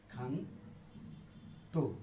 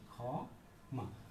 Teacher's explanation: এটা মনে রাখতে হবে যে ক্ষীয় এর উচ্চারণ যদি প্রথমেই ক্ষীয় থাকে তাহলে এর উচ্চারণ হবে খ এর মতো।